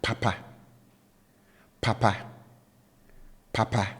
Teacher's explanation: I raised my pitch level on both syllables and accordingly I have you know the high tone marker on both syllables